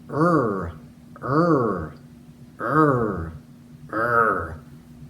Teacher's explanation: For the letter R, the front portion of our tongue kind of lifts up and then gets pulled back. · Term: R sound